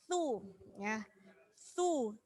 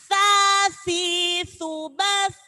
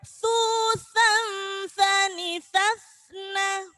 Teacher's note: Jadi tha itu ujung lidahnya digigit. Jangan sampai su.